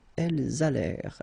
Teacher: this ENT at the end, you know, the mark for the plural, well, clearly you don't pronounce it, so you get allèrent.